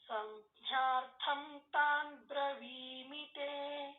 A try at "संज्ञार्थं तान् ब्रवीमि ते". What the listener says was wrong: ಜ್ಞಾರ್ಥಂ ಅಲ್ಲ, ಸಂಜ್ಞಾರ್ಥಂ. ಥಾಗೆ ಮಾತ್ರ ಮಹಾಪ್ರಾಣ ಹೇಳಬೇಕು.